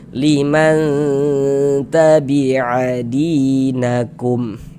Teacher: di bagian man suaranya kita tahan. Nah, kita panjangkan sebentar kira-kira sepanjang 2 harokat.